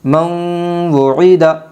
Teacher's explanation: نون ساکن کے بعد یمن کے 4 حرفوں میں سے واو آئی ہے، اس لیے نون ساکن کو غنہ کے ساتھ پڑھے گی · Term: ادغام مع الغنہ